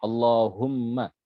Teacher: huruf mim pada lafadz Allahumma. Jangan dibaca panjang.